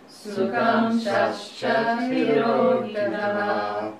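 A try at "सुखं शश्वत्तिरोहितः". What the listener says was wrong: There is no coffee break between Sukham shashcha and tirohitaha. Sukham shashchatirohitaha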